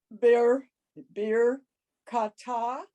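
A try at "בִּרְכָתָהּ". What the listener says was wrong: Almost, except there's no dot in that backward C, so it's a ch. Bir chata.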